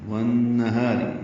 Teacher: یہ نون مشدد پہ غنہ ہے، ادغام شمسی مع الغنہ. ہا الف مدہ ہے.